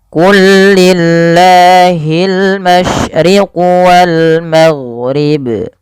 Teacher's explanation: Di sini pelafal qul lillah lamnya diidghamkan ke huruf lam setelahnya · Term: idgham mutamatsilain